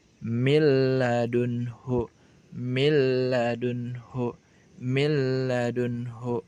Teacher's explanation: huruf nun sukun bertemu dengan lam, ya. Idgham kamil juga berlaku, ya, pada idgham bila gunah. Huruf pertama dileburkan kepada huruf kedua sehingga dibaca milladunhu, milladunhu, milladunhu.